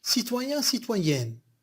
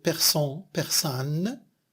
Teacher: Code graphique, il y a le groupe graphème en et persan, persane, il y a le groupe graphème en. C'est une variation nasale contre une voyelle orale plus nasale. Alors, la variation nasale pour citoyen, citoyenne, il y a un qui devient N.